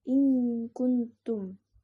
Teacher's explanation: Jadi nun itu sembunyi sebelum huruf ikhfa. Jadi bacanya in kuntum, atau satu huruf lagi yaitu ta.